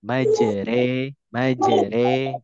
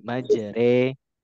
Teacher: imalah hanya untuk mengubah suara ro menjadi re